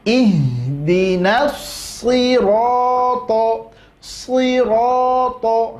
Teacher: Di situ so-nya tebal, ro-nya tebal, to-nya tebal. Maka setiap huruf tebal bunyi vokalnya adalah huruf o.